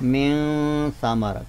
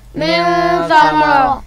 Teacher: आप यहाँ देख रहे हैं कि मिन के नून साकिन के बाद हरफ़ था है, तो हरफ़ था हरूफ़ हल्की में से नहीं है, लिहाजा हम यहाँ पे नून साकिन पर इख़्फ़ा करेंगे, यानी गुन्ना के साथ पढ़ेंगे।